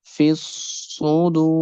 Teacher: the ra sound will be bold and the dal sound will be stretched because of waw madda.